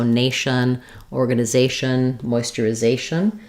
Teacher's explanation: So for moisturization, we stress on the second to last syllable. Words that end in shun are stressed on the syllable before.